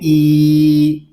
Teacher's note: حمزہ کو ہم ایک الف تک کھینچ کر پڑھیں گے کیونکہ یہاں پہ یا مدہ ہو رہا ہے